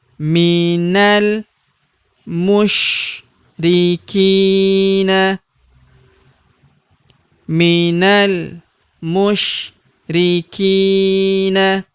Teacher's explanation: Huruf ki kita panjangkan dua harakat karena terdapat ya sukun di depannya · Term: panjangkan 2 harokat